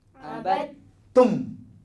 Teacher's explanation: Setiap kalau ada sabdu, huruf yang sebelumnya kalau dia mati, dia kena masuk dalam huruf ta. Dan ta ni berbunyi 2 kali.